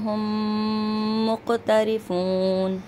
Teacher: मीम साकिन के बाद मीम है तो यहाँ पे इदगाम शफवी का गुन्ना होगा और काफ में जो है आवाज़ पलट कर आएगी।